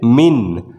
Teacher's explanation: نون کی آواز یہاں پر صاف ہوگی اور گنہ نہیں کریں گے، بلا گنہ، یعنی کہ بنا گنہ کے ساتھ اس کو پڑھیں گے۔